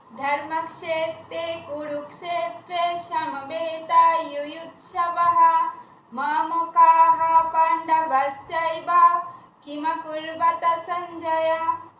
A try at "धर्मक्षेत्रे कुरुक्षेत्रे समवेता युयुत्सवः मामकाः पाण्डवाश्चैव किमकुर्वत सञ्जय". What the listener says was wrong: ঠিক আছে।